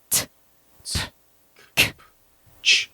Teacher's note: when you just make consonant sounds like t, t, k, you can't feel it vibrate